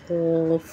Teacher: क़ाफ़ ज़बान की जड़ को ऊपर के तालू से लगाकर अदा होता है